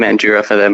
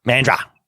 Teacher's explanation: uses the u it's just man that's how we pronounce it we just forget that there's a whole extra vowel right in the middle